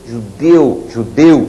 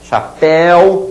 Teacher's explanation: tem um som fechado não tem um som aberto estridente